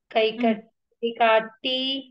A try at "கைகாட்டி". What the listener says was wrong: కైకాటి. దీర్ఘం ఉన్న దగ్గర కొంచెం ప్రోలాంగ్ చేశారనుకోండి ప్రొనౌన్సియేషన్ మంచిగా వినిపిస్తుంది అనమాట. కైకాటి.